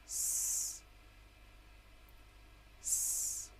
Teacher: S, s is the unvoiced alveolar fricative.